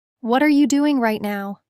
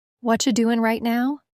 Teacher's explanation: Feel how what are you becomes what che.